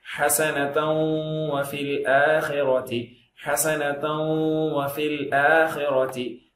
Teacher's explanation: ஹசனதௌ உதடு சொல்றது மட்டும் இல்ல, ஹசனதௌ அப்படின்னு மூக்கால ஒன்னாவும் செய்யணும்.